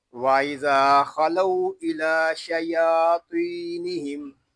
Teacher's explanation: وَإِذَا میں ذال کو ہم 1 الف تک کھینچ کر پڑھیں گے کیونکہ یہاں الف مدہ ہو رہا ہے